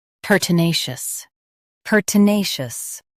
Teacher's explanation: Stress na and keep shus soft.